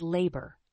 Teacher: the word labor has two syllables with the stress on the first syllable